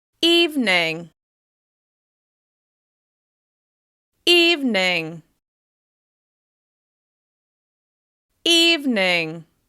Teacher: Over time, we've dropped that second syllable and it's just 2 syllables. Remember to stress that first syllable by making the vowel sound longer, louder, and higher in pitch with extra clear mouth movement. You're going to relax on the second syllable.